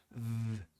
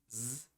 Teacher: São consoantes que fazem a sua garganta vibrar.